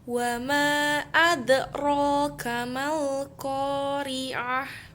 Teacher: Mengapa dapat dikatakan hukum bacaan qalqalah sugro? Karena terdapat dal mati di dalam kalimat. Cara membacanya seperti membalik membentuk huruf dal.